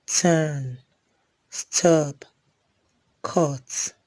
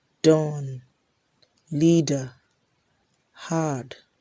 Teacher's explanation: T is a voiceless alveolar plosive and D is a voiced alveolar plosive.